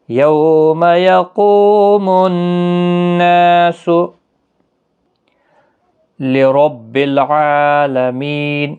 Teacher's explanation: یوم یو واولین ہے، ما کو کھینچا نہیں، قو واو مدہ ہے، نون مشدد پر غنہ ہوگا، الف مدہ بھی ہے، 1 الف کی مقدار کے برابر کھینچ کر بھی پڑھیں گے۔